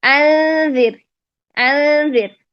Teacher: ذال کے مخرج کے اندر جا کے اخفا کریں